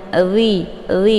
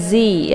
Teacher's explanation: untuk posisi huruf dha ini makhrajnya ujung lidah sama ujung gigi seri bagian atas. Jadi dia bacaannya lembut, dhi bukan zi, ya.